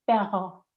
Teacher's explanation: El niño está intentando vibrar, pero no está haciendo lo correcto. No está vibrando la punta de la lengua, está vibrando el fondo de la lengua. Porque para hacer la R francesa, lo que sube es el final de la lengua, lo que se llama el dorso, por detrás.